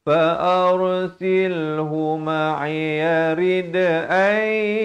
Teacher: Ra di sini dibaca tebal. Jangan baca fa'ar. Ramai yang baca nipis. Salah. Di sini dibaca tebal.